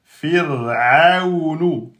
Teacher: Il est précédé d'une kasra et donc il est aminci. Donc le ra, quand il est soukoun et qu'il est précédé de la kasra, il est aminci.